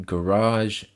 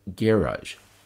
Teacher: garage with the emphasis on the first syllable and garage with the emphasis on the second syllable. The difference is primarily regional.